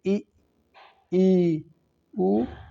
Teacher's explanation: समृत स्वर यानी उच्चारण में मुख लगभग बंद रहता है, मुख द्वार सकरा होता है, यानी जो हमारा मुख द्वार होता है, जो इन वर्णों को बोलने में जो हमारा मुख होता है वो लगभग बंद रहता है, यानी हल्का खुला होता है।